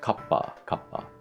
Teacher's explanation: This is another case where the consonant is doubled up and then the two sounds are sort of stuck together.